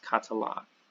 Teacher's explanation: the last syllable gets the accent